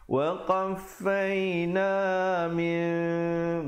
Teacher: Jadi bunyi nun itu ditukarkan kepada bunyi mim yang nipis sahaja. Bibir itu sekadar bersentuhan saja. Jangan pula kita bunyi macam dengung idgham bi gunnah. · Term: iqlab